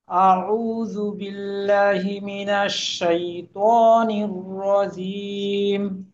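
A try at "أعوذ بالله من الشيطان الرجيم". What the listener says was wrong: আচ্ছা, আপনি আয়াতে আরেকটু সময় নেবেন। আপনার টানের পরিমাণটা আরেকটু হওয়া দরকার। যেমন মনে করেন, আউযু বিল্লাহি মিনাশ শাইতানির রাজীম, আপনার একালিফের পরিমাণ একটু একটু ছোট হয়ে যায়।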